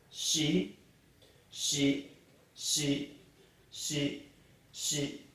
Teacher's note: Japanese do not have a C sound like city or any word like that. They always pronounce it with an H sound. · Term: shi sound